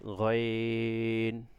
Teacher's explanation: আইনটা যেভাবে উচ্চারণ গলার একেবারে ভিতর থেকে আসবে, গইনটা কিন্তু ওইভাবে না, গইনটা সাধারণই হবে, নর্মালি হবে গইন